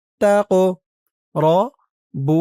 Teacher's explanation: কফটা কলকলার হরফ ধাক্কা দিয়ে পড়তে হবে।